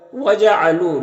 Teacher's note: لو میں واو مدہ ہے، ایک الف کے برابر کھینچیں گے۔